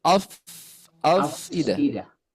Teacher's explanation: Awas fa-nya tidak terpantul